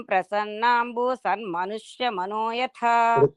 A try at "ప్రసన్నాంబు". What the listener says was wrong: ప్రసన్నాంబు అని ఆపేసారు భూ దీర్ఘం ఇవ్వకూడదు